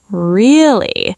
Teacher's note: low, drawn out, like you're plotting. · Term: mischievous really